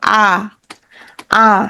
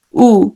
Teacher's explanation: আ হচ্ছে একদম বিবৃত। উ হচ্ছে একদম সংবৃত।